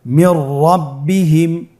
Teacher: নুন সাকিনের পরে যদি র হরফ আসে তাহলে নুন সাকিনকে পরবর্তী হরফের সাথে মিলিয়ে গুন্না ছাড়া পড়তে হবে। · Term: ইদগামে বিলা গুন্না